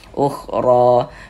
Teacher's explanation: Kemudian ro dibaca tabhim karena dia memiliki harakat fathah. · Huruf ra dibaca panjang ya, ini mad tabi'i. Tanda panjangnya ini ya, alif kecil atau fathah berdiri. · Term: tabkhim